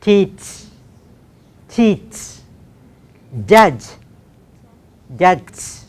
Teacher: the tip of the tongue should first touch the alveolum and then it should move to the palate.